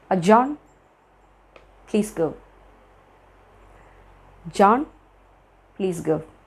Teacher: അവിടെ ജോണിനും പ്ലീസ് ഗോയിനിടയിൽ ഒരു പോസ് ഇട്ടിട്ടുണ്ട്. അത് കുറച്ചും കൂടെ സ്റ്റേൺ ആയിട്ട് പറയാൻ വേണ്ടിയിട്ടായിരിക്കും, ഒന്ന് എംഫസൈസ് ചെയ്യാൻ വേണ്ടിയിട്ടായിരിക്കും, അയാളോട് പുറത്തു പോകാൻ പറയാൻ വേണ്ടിയിട്ട് എംഫസൈസ് ചെയ്യാൻ വേണ്ടിയിട്ടായിരിക്കും.